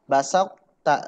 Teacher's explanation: Maka dibaca ketika to bertemu ta, basak ta gitu. Masih ada sifat idbaqnya.